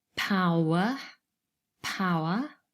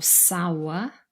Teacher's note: the schwa is never stressed so the stress is on the first syllable